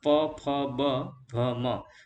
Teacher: જે વ્યંજનોનો ઉચ્ચારણ કરતી વખતે હોઠ એકબીજાને સ્પર્શે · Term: ઓષ્ઠ્ય વ્યંજનો